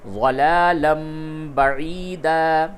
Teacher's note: نون ساکن اور تنوین کی آواز کو میم سے بدل کے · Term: قلب